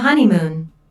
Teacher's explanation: there are three syllables in honeymoon with the stress on the first syllable this content word is culturally important so it's emphasized it means